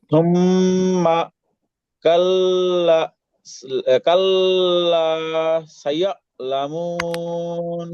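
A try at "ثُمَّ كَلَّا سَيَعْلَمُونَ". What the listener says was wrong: হ্যাঁ, একটু মিলাই বলেন। ঠিক আছে, পড়া সম্পূর্ণ ঠিক আছে, একটু মিলাই বলেন, থামা যাবে না, সুম্মার পর থামা যাবে না, এই যে এইভাবে বলেন। সুম্মা কাল্লা সায়ালামুন, এইভাবে বলেন।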